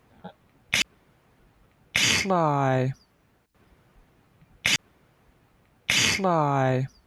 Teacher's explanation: Starting from a T and just lowering the sides of the tongue.